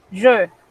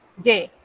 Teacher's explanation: cuando usted pronuncia el pronombre, es un sonido cerrado que en el español no existe. Pero cuando usted dice yo tengo, es un sonido abierto igualito que la E del español.